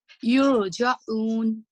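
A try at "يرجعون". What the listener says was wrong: Yes, you need to trill the ra a little bit. Otherwise, it does not sound right.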